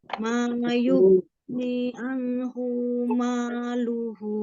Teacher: Alirkan lagi ghainnya. Sekali lagi lebih dialirkan lagi ghainnya.